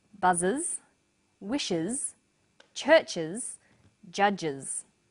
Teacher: The first pronunciation of the final S is uz. It's pronounced this way after sounds such as s, z, sh, ch and j.